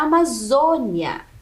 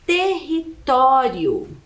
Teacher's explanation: uma palavra paroxítona que é aquela que tem a penúltima sílaba mais forte